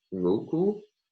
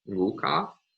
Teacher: So the word for water, underlying nguku, undergoes final lowering, meaning that this underlying word final u becomes an a, and thus it becomes nguka.